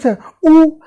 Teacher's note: तो उ ओष्ठ की ध्वनि है